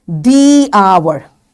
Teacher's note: we know this H over here in hour is mute, we don't say it. So the first sound when I say hour is a vowel sound, that's why it's the hour, not the hour, it's the hour, right?